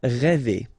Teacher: the sound E, really open one